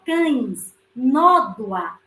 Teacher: No cães, o A vai ser a vogal e o E deixa de ser vogal e passa a ser semivogal.